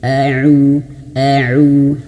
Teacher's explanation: Ketika taawuz, bibir kita harus betul-betul dimonyonkan ketika domah.